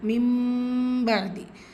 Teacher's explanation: மிம்பாதி இதில் என்ன இருக்குது, குட்டி மீம் இருக்குது. நூன் சுக்குனுக்கு அப்புறமா பா வந்திருக்கு. இக்லாபுடைய சட்டம் புரட்டி ஓதணும். மிம்பாதி ஸோ இந்த இடத்துல குன்னாவும் செய்யணும்.